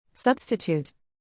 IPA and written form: ˈsʌbstɪˌtut (Substitute)